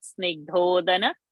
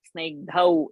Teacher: It's not Snigdhodana, Snigdhau. So all the Au should sound as Au only in pronunciation. It can't be made as O.